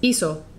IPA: iso